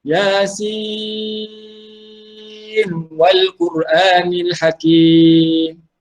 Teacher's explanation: Jangan masukkan nun ke dalam huruf waw itu. Kita ingat kan, nun mati, Yasin, depan ada huruf waw. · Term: izhar